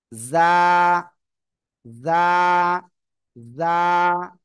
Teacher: জিহ্বার আগা সামনের নিচে দুই দাঁতের পেটও আগার সাথে লাগাতে হবে